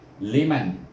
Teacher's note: Apakah kita nak dengung? Tidak. Sebab dia bertemu dengan kha, huruf khalqum, iaitu baca dengan izhar halqi